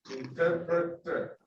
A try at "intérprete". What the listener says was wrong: No R at the end, no R at the end of interpreter, just interprete.